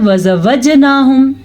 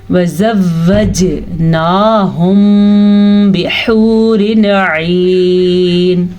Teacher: واو کی شد آپ ضرور ادا کریں گے کیونکہ یہ لازمی ہے ادا کرنی